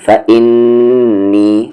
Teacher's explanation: نون پہ غنہ ہو رہا ہے کیونکہ نون پہ تشدید ہے